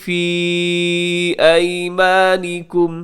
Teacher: فی کو لمبا کیجیے گا، یہاں پہ یا مدہ ہے